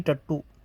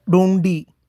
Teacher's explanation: जब उल्टी जीभ की नोक कठोर तालू का मध्य भाग स्पर्श करती है तभी ट वर्ग का उच्चारण होता है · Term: मूर्धन्य स्पर्श